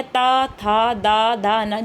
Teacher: आपके जो आगे के दांत हैं आपका जीभ जो है उनको टच कर रही है। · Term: त वर्ग